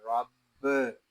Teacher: یہاں را کے اوپر زبر ہے، را کو پر پڑھیں گے، با مشدد ہے، اس میں جماؤ کریں گے، اس کو رب ایسے نہیں پڑھیں گے، اس کو پڑھیں گے رب۔